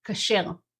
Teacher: It's just kasher instead of kosher. The syllable stress is at the end and we have an A instead of an O.